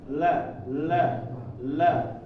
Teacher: lidah dari pinggir ke depan melengkung nah ini menyentuh ke bagian atas ya bagian atas ee gigi Serik di atas serinya ya la · Adapun lam di depan. Pinggiran lidah, ujungnya, pinggir kiri kanan sama ujungnya ini menyentuh di bagian atas gigi seri atau di bagian gusi ya, bagian gusi. Enggak nyampe ke gigi, jangan ditaruh lam ini di gigi. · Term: huruf lam, makhraj huruf lam